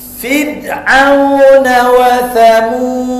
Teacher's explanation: Sebelum ra mati di baris bawah, maka dia nipis, dinamakan tarqiq.